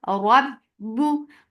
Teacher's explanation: Rabbu for dhamma. When you are saying ba with dhamma, you're circling your lips very nicely.